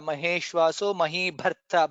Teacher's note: Bha is Mahaprana there